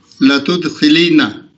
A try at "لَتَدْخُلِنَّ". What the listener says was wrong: تد نہیں ہوگا، تد تو مجہول ہو جائے گا.